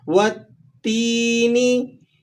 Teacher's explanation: یا ساکن ہو اور اس سے پہلے حرف پر زیر آ جائے تو یہ یا مدہ ہے۔ آپ نے اس کو ایک الف تک کھینچ کر ادا کرنا ہے